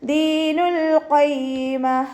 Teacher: ഖാഫ് ഇസ്തിഅലാൻ്റെ ലെറ്ററാണ്. അപ്പോൾ നല്ലോണം ഉയർത്തിയിട്ട് ഉച്ചരിക്കുക. തഫ്ഖീം ചെയ്തിട്ട് ഉച്ചരിക്കുക.